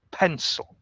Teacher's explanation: We stress the first syllable. The second syllable is soft. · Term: strong syllable